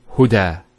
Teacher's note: There's the elongation as well, because of the fatha followed by an alif. If this wasn't there, it will be huda, but huda with the alif.